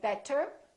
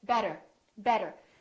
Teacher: So, for example, when we say the word better, we have a vowel, T, and another vowel. This T changes and it becomes this fast D sound.